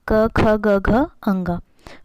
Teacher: क वर्ग में यह कंठ व्यंजन कहते हैं इसे, जो आपके कंठ से निकलती है।